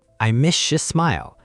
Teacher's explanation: The S and Y blend to sh and then the your gets reduced a bit.